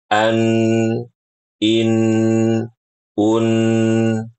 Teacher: ketika mengucapkan huruf nun di sini, ujung lidah kita menempel kepada gusi dua gigi seri atas. Sehingga mulut kita itu tertutup.